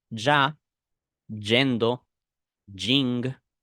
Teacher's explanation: Y will also sound like an SH